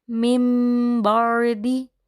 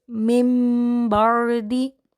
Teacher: یہاں پر ہم با سے پہلے میم کی آواز کو شامل کر کے پڑھتے ہیں